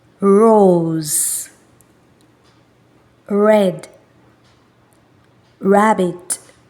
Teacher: our tongue shouldn't touch our upper jaw and it should roll inside of the mouth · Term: ER sound